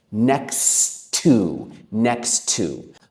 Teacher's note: So we often merge them. Instead of saying next to with two t sounds, we merge them. So it's like one word when I say it.